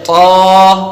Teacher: جب ہم طا کو ادا کریں گے تو اس میں ہم زبان کی جڑ کو تالو کی طرف بلند کریں گے